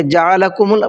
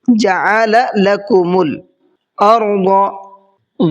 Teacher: دو لام ہے یہاں پر، ایک جعل کے ساتھ میں ہے اور ایک لکم کے ساتھ میں ہے، تو دونوں کو الگ الگ پڑھنا ہے۔ ایسا نہیں کرنا کہ جعلکم پڑھ دے اس کو، ٹھیک ہے۔